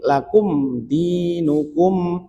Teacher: dia izhar syafawi. Jadi dibacanya jelas. Jangan lakum, jangan ditahan.